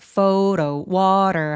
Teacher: 요 T는 모음 사이에 끼어 있어서 굴러가는 소리를 내요.